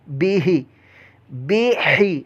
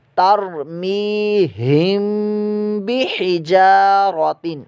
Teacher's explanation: ہا کی آواز یاد رکھیے گا حلق کے درمیان والے حصے سے آ جاتی ہے